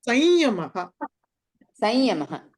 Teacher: స మీద అనుస్వారం వచ్చిన తర్వాత య వచ్చిన వచ్చినా ల వచ్చినా వాటి యొక్క అనునాసికాలు పలకాలి